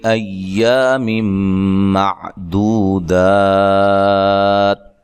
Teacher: حمزہ کو تحقیق سے پڑھنا ہے. میم نون تنوین کا ادغام مع الغنہ ہے. دو و مدہ ہے.